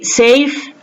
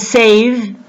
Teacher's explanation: The strong consonant fa makes the vowel that comes before it shorter, whereas the weak consonant va makes the vowel that comes before it longer. For example, if we say safe and save, the vowel in the word save is pronounced with more length than the vowel in the word safe.